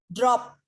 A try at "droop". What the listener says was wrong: Kalau itu O-nya 2, itu dibaca droop ya. P-nya droop. Enggak double P, soalnya O-nya 2.